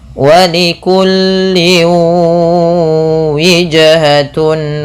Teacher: ketika sudah dimasukkan ditahan dengan gunnah sepanjang 2 harakat. Maka walikulli wijhatun, bukan hanya sekedar masuk, bukan hanya sekedar walikulli wijhatun, tapi tahan dulu 2 harakat. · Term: idgham bi gunnah